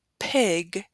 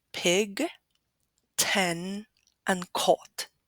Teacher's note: when you produce the word Pig you can notice there's more strength or more air coming out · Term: aspiration